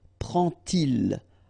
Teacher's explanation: And so this little d here is in red just to show you that you won't pronounce it like d to make the liaison, but you will pronounce it like t